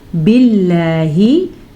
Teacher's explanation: लफ्ज़ अल्लाह को बारीक पढ़ेंगे, लफ्ज़ अल्लाह से पीछे ज़ेर की वजह से